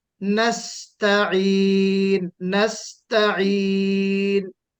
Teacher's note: تا میں تفخیم نہیں ہونا چاہیے. تا کو باریک پڑھنا ہے.